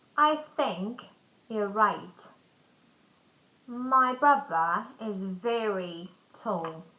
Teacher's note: replacing th with f or v. Common in some accents.